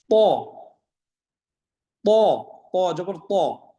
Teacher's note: প উচ্চারণে মোটা হবে কিন্তু বাতাস বের হবে না, প এরকম হবে না, প প মোটা হয়।